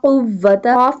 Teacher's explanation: قاف pronounced from the root of the tongue touching the soft part of the palate۔ قاف زبان کی جڑ اور تالو کے نرم حصے سے ادا ہوتا ہے۔